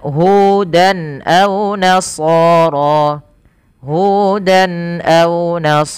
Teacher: Hudan ini harus jelas suara tanwinnya tanpa ada penahanan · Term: izhar halqi